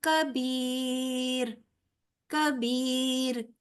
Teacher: र पुर नहीं पढ़ा जाएगा बारीक होगा क्योंकि र साकिन मा कबल साकिन मा कबल जेर है